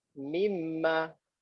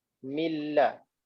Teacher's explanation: Bila nun bertemu dengan mim, nun ni seakan-akan hilang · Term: idgham kamil